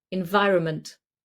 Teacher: We rarely even say the N in the middle. It just blends into the M. So environment, but if I say it fast, environment, we hardly say the N.